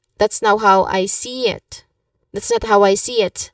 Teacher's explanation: So here, pronunciation-wise, you stress on see it.